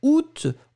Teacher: août, on va le prononcer en général avec le T final. Si vous ne l'entendez pas, c'est possible.